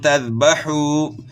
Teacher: ذال ہے، زا سے چینج نہ ہو جائے، اور واو مد ہے، کھینچنا ہے آپ نے